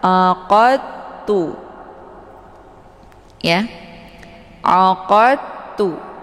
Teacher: Jadi ketika ada dal sukun bertemu dengan huruf ta, maka sifat qalqalaf ini hilang. Jadi kita tidak lagi memfokuskan kepada huruf dal. Jadi langsung dari qa ke ta. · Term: Idgham mutajisain, idgham mutajanisain